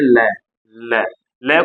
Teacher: इसे पार्श्विक व्यंजन क्यों कहा जाता है? क्योंकि जब हम लय का उच्चारण करते हैं तो हवा जो है जीभ के पार्श्व से निकल जाती है, यानी बगल से निकल जाती है